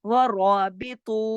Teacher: را موٹا پڑھا جائے گا اور تو بھی موٹا پڑھا جائے گا 2 حرکات کھینچ کے